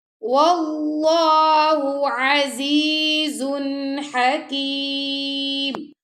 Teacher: اللہ کی لام کو موٹا پڑا، اللہ کی لام سے پہلے زبر آ گیا، اور عزیزن زادوں پہ زن کے بعد آ گیا ہا، تو یہاں پہ ہم کریں گے اظہار، یعنی کہ نون تنوین آ گیا نا، زادوں پہ زن، تو یہاں پہ آپ نے اظہار کرنا ہے، نون کی آواز کو ظاہر کرنا آپ نے.